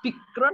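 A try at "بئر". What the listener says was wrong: Ah, pakai Hamzah. Kalau pakai kaf, Bikr. Bikrun, pakai kaf.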